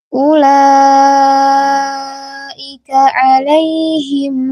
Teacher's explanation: mad wajib muttasil yang panjangnya 4 atau 5 harokat ketika wasal, karena ia adalah mad yang bertemu dengan huruf hamzah dalam satu kata.